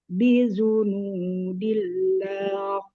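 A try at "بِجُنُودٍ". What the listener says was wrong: Bijunudi, jimnya kuat kan?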